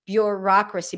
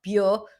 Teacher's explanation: pronounce this word somewhere between o and u, bureaucracy, but you have a y sound